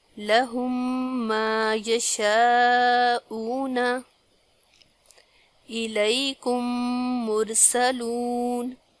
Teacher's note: اس کے بعد ہے میم ساکن کا ادغام، یعنی اگر میم ساکن کے بعد میم آئے تو میم کو دوسرے میم کے ساتھ ملا کر غنہ کے ساتھ پڑھیں گے، اس کو ادغام کہتے ہیں۔